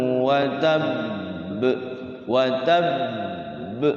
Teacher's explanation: sukun yang pertama disimpan, sukun yang kedua dipantulkan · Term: qalqalah